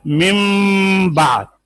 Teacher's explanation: نون ساکن کے بعد با آ جائے تو نون کو میم سے بدل کر غنہ کے ساتھ پڑھتے ہیں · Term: اقلاب